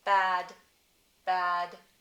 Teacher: I don't aspirate that one. I don't aspirate the b. Ah. Same vowel as cat.